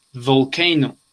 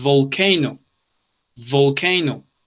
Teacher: es labio dental. Utilizamos los labios y los dientes. El sonido se siente acá cuando la pronunciamos. Volcano. Tienen que sonar las cuerdas vocales para que se produzca bien el sonido.